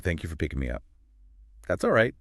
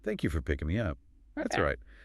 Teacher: That's all right. Delivered more flatly. Maybe a little pause. · said with a smile, a rising falling intonation. It's genuinely sincere.